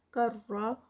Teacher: تن پہ اخفا ہو رہا ہے، تنوین ہے